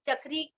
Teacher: चक्री च पर आघात और क्री दीर्घ